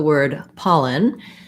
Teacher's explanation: We have first syllable stress in the word pollen. So the pa syllable is long and the ln syllable is short and unstressed.